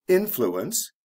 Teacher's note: influence the stress is on the first syllable